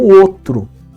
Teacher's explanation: Ou seja, o que acontece? O encontro vocálico ou, na verdade, ele perde o U. Então fica só o O.